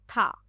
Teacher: था जो है ये घोष है, स्पर्श व्यंजन है, महाप्राण है और दंत है।